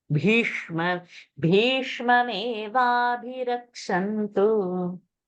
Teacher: Bha, little bit longer. Mahaprana strong. And Bhishma also should be a Murdhani.